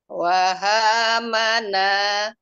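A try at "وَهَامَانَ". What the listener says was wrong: Nah, mak Bu, maknya. Jadi sebetulnya ini Ibu terlalu cepat Bu. Coba bacanya gini. Wahamana. Lebih enak coba.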